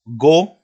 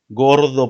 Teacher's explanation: Ese go es un fonema velar sonoro.